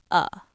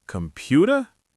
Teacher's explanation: The schwa is the most common vowel sound. It's written as an upside down e in the dictionary, but it sounds like a very lazy uh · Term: schwa sound